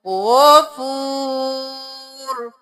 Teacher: غین موٹا رو موٹا غفور. رو ساکن ہو جائے گا کیونکہ وقف ہے.